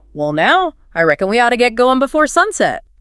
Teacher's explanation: you can really hear those vowels stretching out in now and going · the vowel sounds are elongated giving it that laidback almost musical quality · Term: southern droll, Southern drawl